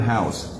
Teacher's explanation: ow is one vowel but it's made up of two sounds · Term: diphthong